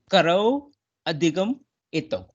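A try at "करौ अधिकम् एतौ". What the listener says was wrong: Samyak.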